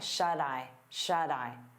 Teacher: we turn that T into a soft D because it's between vowels. And you'll hear it on both words.